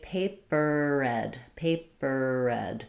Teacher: link it together with a word that starts with R. So say paper red, and your tongue is going to be getting ready for this R of red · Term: American R